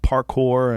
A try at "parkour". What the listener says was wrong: It sounded like you said park whore.